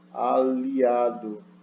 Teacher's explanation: Você vai tocar no palato, aliado, e não mais no alvéolo. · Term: palatização